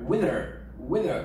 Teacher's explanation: les deux mots ils sont squeezés, tu vois, donc ça fait wither.